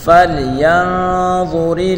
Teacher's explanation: نون ساکن کے بعد اخفا کا حرف ضا ہے، تو یہاں اس نون میں ہم گنہ کر کے پڑھیں گے